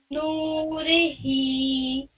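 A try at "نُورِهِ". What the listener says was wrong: रे आप लगता है बोलती हैं, री साफ बोलिए उसको, नूरिही।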